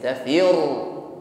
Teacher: Jadi ra-nya di sini tasydid, ya, ditekan. Dalam menekan huruf ra di sini jangan lupa tetap ada sifat takrir, irti'adu tarful lisan, ada getaran di ujung lidah.